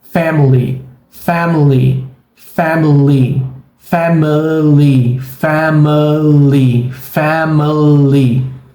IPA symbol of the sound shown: ə